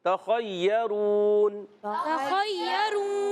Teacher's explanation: خا حلق کے اوپر والے حصے سے ادا ہوتا ہے اور خا حرف مستعلیہ میں سے موٹا کر کے ادا کریں گے · خا کم درجے کا پر ہوتا ہے